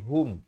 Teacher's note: ha baris damah bunyi hu bukan bunyi ho